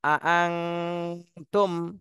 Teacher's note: আং তুম এখানে নুন সাকিনের পরে ইকফার হরফ তা এসেছে এজন্য এই নুন সাকিনে ইকফা গুন্না করতে হবে অনুস্বারের মতন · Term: ইকফা গুণা